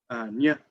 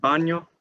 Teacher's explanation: then we have the nj, which is a [ɲ] sound